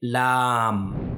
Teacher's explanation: ये हर्फ जो है ये बारीक पढ़ा जाता है। इसको मोटा नहीं पढ़ेंगे। बारीक पढ़ेंगे। और इसको थोड़ा खींच कर भी पढ़ेंगे।